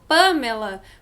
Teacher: A gente fala o Pamela, porque o acento tá lá segurando a sílaba tônica no P.